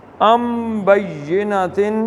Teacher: اس میں میم نکلتا ہے، نون نہیں پڑھا جاتا. ان بینتن نہیں پڑھا جائے گا، ام میم پڑھا جائے گا. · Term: اقلاب